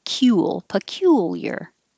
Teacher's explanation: you have to round your lips for the oo and up for the L.